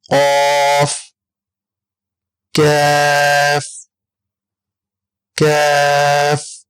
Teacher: زبان کی جڑ اور تالو کے سخت حصے سے ہم کیف کو ادا کریں گے